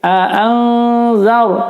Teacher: sebelum ra sukun baca fathah dibaca tafkhim. A'anzar, tebal ya, zar.